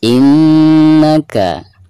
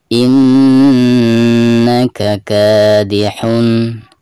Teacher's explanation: nun yang bertasydid itu adalah merupakan salah satu daripada huruf guna. Maka cara membacanya itu harus ada tekanan disertai dengan guna 2 atau 3 harokat